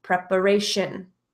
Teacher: I pronounce the TION as shin